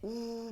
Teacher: 근데 우 발음했을 때 어때요? 입술 모양이 어때? 동그랗다라는 거 느낄 수 있죠? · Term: 원순 모음